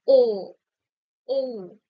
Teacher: আমরা যখন ও বলছি ঠোঁটটা গোলাকৃতি হয়ে যাচ্ছে